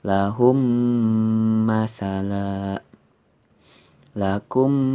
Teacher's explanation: huruf yang berhadapan nya yaitu sama baik makhrojnya maupun sifatnya yaitu ketika mim mati menghadapi mim dibaca dengan menggunakan dengung atau gunnah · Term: Idgham Mutamatsilain